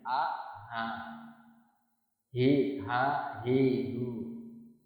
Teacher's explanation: H itu karena huruf secara makhrajnya dari tenggorokan pangkal bagian bawah, jadi lebih dekat ke dada. Jadi kayak keluar dari dada tapi tidak berlebihan.